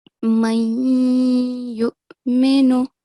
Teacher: The nasal sound should be held for 2 seconds. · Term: partial assimilation